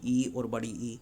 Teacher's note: तालु से बोला जाता है ई और बड़ी ई